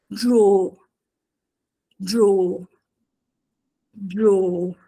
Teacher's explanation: una o che si sposta verso una u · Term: dittongo